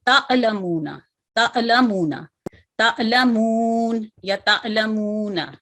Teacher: लेकिन इस बात का हमने खास ख्याल रखना है कि हमजा साकिन की जगह आइन साकिन की आवाज ना अदा हो, क्योंकि आइन साकिन जो है वो हलक के दरमियानी हिस्से से अदा होता है और हमजा साकिन जो है मैंने आपको बताया हलक के निचले हिस्से से अदा किया जाता है। इसको झटके से पढ़ते हैं हमजा साकिन को, लेकिन इतना झटका ना दें कि अलिफ साकिन की आवाज आइन साकिन की तरह निकले।